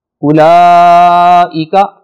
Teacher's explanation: اولئک بڑی مد ہے، اسے ہم 5-6 حرکتوں کے برابر لمبا کر کے پڑھیں گے